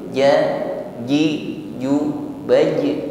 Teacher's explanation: tambahkan sifatnya qalqalah, ada bunyi yang memantul. Ainil ja, ji, ju, baj, ya, pantulan yang ringan saja.